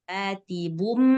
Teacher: Cuma karena dia ketemu ba, jadinya suara tanwinnya hilang. Jadi ganti suara mim. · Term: hukum iklab